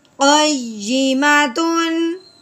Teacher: ہاں جی تا کے اوپر تنوین ہے، آگے عین حرف ہلکی میں سے ہے، اس لیے تنوین پہ غنہ نہیں کریں گے بلکہ بغیر غنے کے اظہار کے ساتھ پڑھیں گے